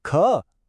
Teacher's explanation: अगर हम अपना हाथ मुंह के आगे रखें और ख बोलें तो हवा का एक तेज झोंका महसूस होगा। और यही तो है इस दो चश्मी है का असली वाला जादू।